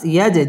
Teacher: জিম কলকলার হরফ ধাক্কা দিয়ে পড়তে হবে।